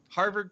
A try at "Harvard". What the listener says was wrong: No, Harvard. Harvard. There's no R's in that word.